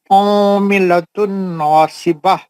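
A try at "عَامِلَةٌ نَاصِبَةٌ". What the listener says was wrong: نہیں, آپ بول رہے ہیں ادغام مال غنہ, لیکن آپ غنہ نہیں کر رہے. عاملۃ ناصبہ, آپ غنہ نہیں کر رہے نا.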